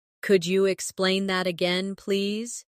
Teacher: Could you sounds like could ya, naturally.